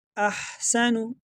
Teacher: یہ ہا ہے، اس کو گلے کے درمیان سے پڑھیں گے